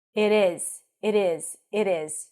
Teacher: You can actually pronounce both of them with a lax I sound.